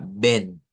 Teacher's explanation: para que suene esa E fuerte, debemos de abrir bien nuestra mandíbula a diferencia de la E del español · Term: E abierta